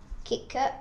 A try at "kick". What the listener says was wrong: Without the schwa?